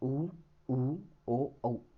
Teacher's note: वृत्ताकार यानी जिन स्वरों के उच्चारण में अपने होठ गोल हो जाते हैं वह वृत्ताकार होते हैं।